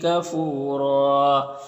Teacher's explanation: وقف کریں گے تو را کو پر پڑھیں گے اور ایک زبر کے ساتھ الف پڑھیں گے